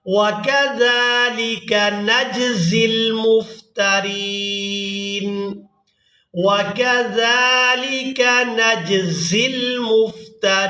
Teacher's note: زال کو ادا کرتے ہوئے سیٹی کی مثل آواز پیدا نہیں ہونی چاہیے، اور جب زا کو ادا کریں گے تو سیٹی کی مثل آواز پیدا ہوگی۔